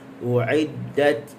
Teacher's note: U'iddat ujung lidah digusi sempurna, lepas suara.